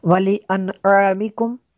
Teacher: نون ساکن کے بعد عین ہے حروف حلقی میں سے، تو یہاں پہ اظہار ہوگا، غنہ نہیں کریں گے